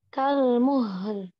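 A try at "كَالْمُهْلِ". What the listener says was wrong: Tapi jangan kelamaan. Rohwah jangan kelamaan. Yang muhl. kayak tasdid nanti dia haknya. Kalmuh kan ya enggak tasdid ya. Rohwah itu jangan dihitung 2 harokat atau kayak gunah enggak. Rohwah itu enggak ada hitungan. Jadi ngalir itu itu enggak ada hitungan dia.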